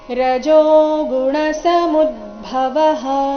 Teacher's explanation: ಸಮುದ್ಭವಃ ಮೂ ಮೇಲೆ ಆಘಾತ ಗಮನಿಸಿ